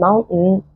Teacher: ممكن تبقى held T، فما اعملها زي الهمزه لو جه بعديها N